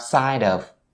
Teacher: So for this phrase's pronunciation, all you need to be aware of is the connection between the word side and of. So you bring the D sound at the end of the word side over to of, you have side of.